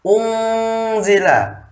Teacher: Tajwid dalam surah Al-Baqarah ayat 4 ini adalah ikhfa karena ada huruf nun menghadapi huruf zai, membacanya harus disamarkan